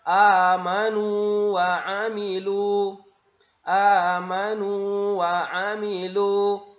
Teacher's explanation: Waw pertama adalah huruf mad, maka dia tetap dibaca 2 harokat